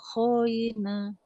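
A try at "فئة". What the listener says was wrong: Nah, itu huruf fa, Bu. Faina.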